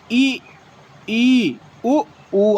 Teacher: संवृत्त स्वर के उच्चारण में मुख द्वारा सकरा हो जाता है। ये संख्या में 4 होते हैं।